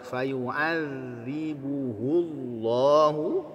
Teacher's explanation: zalnya mengalir karena dia punya sifat ukhawah. Fayu'adzibuhu Allahu ya, berikan nabrah kepada kata Allahnya al-'adzabal akbar.